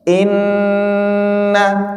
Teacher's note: kalau dia tasydid itu dia menghasilkan huruf dengung. Dengung itu di rongga hidung sini ya.